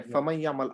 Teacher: you merge this letter Nun into Ya, and so Nun becomes a Ya